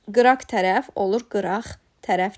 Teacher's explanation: Yəni q-ya keçir və ilk sözün son samiti kar tələffüz olunur.